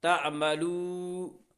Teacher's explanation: تا عین زبر تا، میم زبر ما، تعما، لام واو پیشلو، واو سے پہلے پیش ہے اس لیے واو مدہ ہو، اور واو مدہ کو ایک الف کے برابر کھینچ کر پڑھیں گے